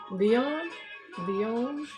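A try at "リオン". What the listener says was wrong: Well, it's Japanese, so there's kind of not really a difference between the L and R. So it's not Leon, but it's more like Rion. Rion. Or Leon. Something like that kind of pronunciation.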